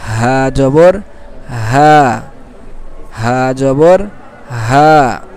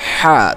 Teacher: এই হাটা বলার সময় কি গলায় কোনো প্রেশার পড়বে না, হালকা শুরু থেকে শুধু বাতাসটা বের হয়ে আসবে, হা। আর এটার বিপরীতটা হলো কি, হা, তখন গলায় প্রেশার পড়বে, চাপ দিয়ে বলতে হয়।